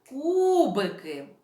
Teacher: перший ми поставимо ось такий знак який позначає наголос тому що у нас у слові кубики наголошений перший склад